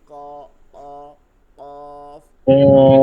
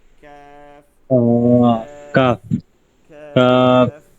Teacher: কফটা কি হবে ভারী হবে ক অ কফ আর قاف ক্যাফটা হালকা হবে ক্যাফ ক্যাফ كاف كاف ক্যাফ।